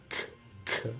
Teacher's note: the back of the tongue is going up against the hard palate of the roof of the mouth